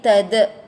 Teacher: Bila kita nak berhenti, nak waqaf di sini, dia akan jadi tada. Da itu adalah qalqalah kubra ataupun lantunan besar ya.